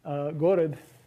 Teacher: The word for town, gorod, is an unaccented word, and that means that it has stress on the first syllable, because the rule is stress the first syllable if there aren't any lexically accented syllables.